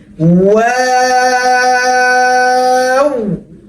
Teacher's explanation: গোল থেকে শুরু হবে, দুই দিকে সমানভাবে ছড়ে যাবে, আবার এসে গোল হয়ে যাবে